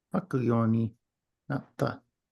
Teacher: the verb has a strong stress, up and down, right? Not flat.